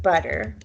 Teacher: double t in english has the flapped r sound